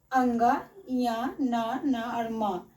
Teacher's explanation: इन सभी का उच्चारण नासिका यानी नाक से होता है जिसे हम नासिक्य वर्ण कहते हैं।